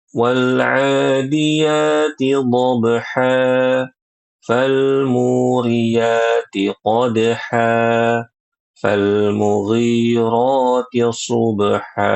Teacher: harusnya diwakafkan dengan dua harakat panjang namanya mad iiwad